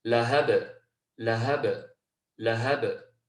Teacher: And if again we were going to stop there, we'd have a ba sakina, which would be an example of qalqalah. So we don't just completely close off the ba, but we allow that natural echo, that natural vibration to come through